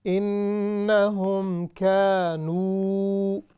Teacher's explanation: we pronounce the full waw madda.